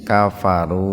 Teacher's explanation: Domah bertemu dengan wawu. Dibacanya sama dengan mad tabi'i ya, panjang. Mad itu panjang, tabi'i itu biasa ya, artinya biasa dua ketukan. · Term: mad tabi'i wawu